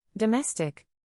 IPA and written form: dəˈmes.tɪk (Domestic)